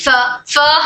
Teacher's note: دو اوپر کے دو دانت نیچے کی ہونٹ کی تری کو ٹچ ہو کر حرف فا ادا ہوتا ہے